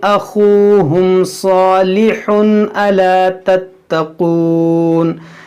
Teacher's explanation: ये तनवीन के बाद हमज़ा यहाँ पर इजहार होगा, यानी यहाँ पर गुन्ना नहीं करेंगे।